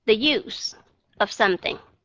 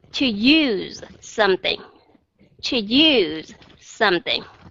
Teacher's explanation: cái chữ use nó sẽ kéo dài hơn và cái ending sound của nó là Z chứ không phải là s